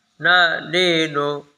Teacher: 9 নম্বর মাখরাজ জিহ্বার আগা, তার বরাবর উপরে, তালুর সঙ্গে লাগাইয়া উচ্চারিত হইবে নুন।